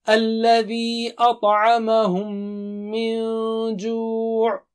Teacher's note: میم پر جو ہے تشدید ہے تو غنہ کریں گے ہم، ڈبل سٹریچ کریں گے، دو حرکت سے پڑھیں گے.